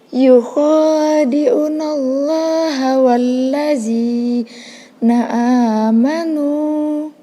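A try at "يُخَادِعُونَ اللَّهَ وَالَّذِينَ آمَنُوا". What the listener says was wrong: Yukhadi'u panjangnya sama.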